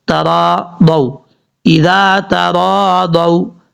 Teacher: تا زبر تا، را الف زبر را، ترا، ضاد واو زبر ضو، تراضوا، اذا تراضوا، اس طریقے سے پڑھنا ہے۔ ضاد کے بعد جو واو ہے یہ واو لین ہے، واو مدہ نہیں ہے، اس لیے اس کو لمبا نہیں کریں گے